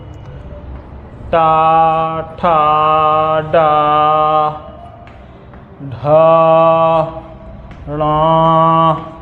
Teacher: टा वर्ग जो है वो मूर्धा से जाता है, बोला जाता है।